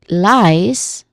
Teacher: It sounds like lies. Like l i e s lies but with a buzzing sound at the end. Not a hissing sound.